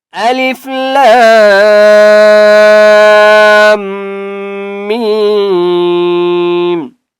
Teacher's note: لام اور میم کے اوپر ہے بڑی مد، اس لیے ہم نے لام اور میم کو 4 سے 5 الف کی مقدار کھینچ کر پڑھیں گے، ٹھیک ہے۔ اور میم کے اوپر ہے تشدید۔